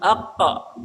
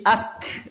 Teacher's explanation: Makharijul hurufnya sama, qaf dan kaf. Qaf dan kaf sama-sama dari keluarnya dari lisan, tetapi berdekatan makhrajnya, tidak persis sama. Qaf bawah, di atasnya lagi sedikit kaf.